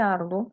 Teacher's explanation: En el caso de arduo, la mayor fuerza de voz es ar. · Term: sílaba tónica